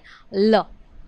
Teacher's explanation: પાર્શ્વિક ધ્વનિઓ જે છે એમાં હવા જે છે એ જીભની બાજુમાંથી ઘસાઈને પસાર થતી હોય